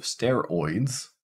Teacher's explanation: In the case of steroids, well, it's pretty much spelled exactly how it's pronounced in this case. So this is the oi case, starts at the back, goes to the front